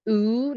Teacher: like ooh the closest I could come with is cool but it's something in between that ooh sound and an o sound